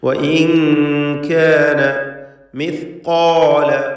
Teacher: വഇൻ കാന മിസ്ഖാല, ഖാഫിനും അലിഫിനും തഫ്ഖീം കൊടുക്കണം.